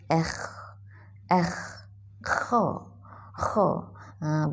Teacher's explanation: Bunyi macam bunyi kahak kan, tapi bukan keluar kahak. Ya. Bunyi seperti air liur lah, dengan bantuan air liur, ya.